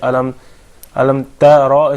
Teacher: You have to recite the Ra heavy. So in order to recite the Ra heavy, you recite the Ta heavy, which becomes Ta.